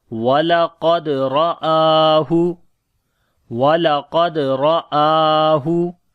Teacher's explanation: Walaqad, we do not long any letter here. Qaf we read in heavy sound. On the dal we make qalqala. Ra again in heavy sound.